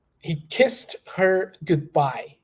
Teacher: the D is very subtle we barely pronounce the letter D there